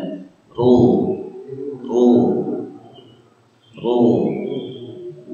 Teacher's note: Yuhsiru itu tipis karena pangkal lidahnya tidak naik ke atas. Jadi harus ditebalkan, pangkal lidahnya dinaikkan supaya membentuk sifat tebal. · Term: ra-nya tebal